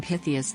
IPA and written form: ˈpɪθiəs (Pytheas)